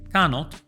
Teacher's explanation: Cannot se pronuncia con A de gato y con O corta.